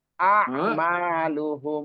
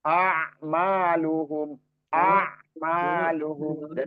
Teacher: hati-hati jangan dipanjangkan, nggak ada mat soalnya, jadi jangan itu dipanjangkan namanya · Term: hamzah